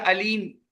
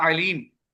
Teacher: علیم حمزہ کے ساتھ عین کے بجائے